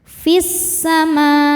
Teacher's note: Cara bacanya alif lam tidak dibaca, masuk langsung ke sin. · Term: alif lam syamsiyah